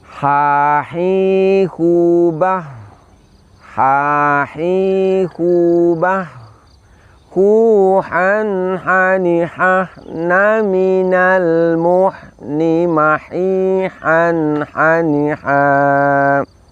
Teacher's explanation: keluarkan dari tenggorokan bagian tengah kemudian kita ucapkan gurkha ini dengan mengalirkan nafas mengalirkan suara kemudian lidah kita pangkal lidah kita tidak terangkat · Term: sifat istifal